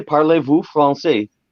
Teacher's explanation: VOUS. Now, here's the thing: the S on the end isn't pronounced.